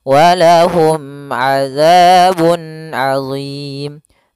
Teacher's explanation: Mim mati ketemu ain harus jelas yaitu izhar syafawi, mimnya tidak boleh ditahan.